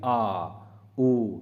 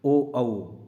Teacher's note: गले से आवाज आ रही है, मतलब जीव के पिछले भाग से आवाज आ रही है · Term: पश्च स्वर